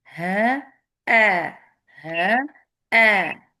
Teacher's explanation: ہا میں صرف آواز ہوا ہے، لیکن وہیں پہ ہمیں حمزہ لانا ہے.